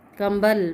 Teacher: कुछ शब्दों में बिंदु होता है लेकिन उसका उच्चारण म आता है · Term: अनुस्वार